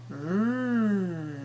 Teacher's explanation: we're gonna feel the sensation of vibration by starting with the vocal cords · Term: voiced sound